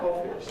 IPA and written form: ˈɒfɪs (office)